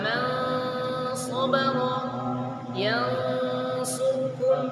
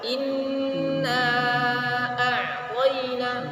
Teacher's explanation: Adapun gunnahnya ikhfa ini tidak menempel ujung lidah kita.